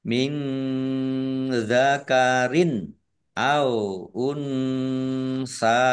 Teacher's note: Nun sukun bertemu dengan huruf zal, bacaan ikhfa, dibaca samar-samar. Nun sukun bertemu dengan sa, juga ikhfa, dibaca samar-samar.